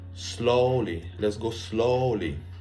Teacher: you need to put the stress on slow